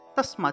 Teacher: তা দেখুন এই যে হসন্তযুক্ত দটা চলে আসলো, আরেকটা নিয়ম আছে যে হসন্তযুক্ত দকে তৎ হিসেবে উচ্চারণ করা হয়ে থাকে। ঠিক আছে, তাহলে তসমাত উচ্চারণটা হবে তসমাত, এই যে এখানে আমি লিখে দিয়েছি, তসমাত উচ্চারণ করবেন।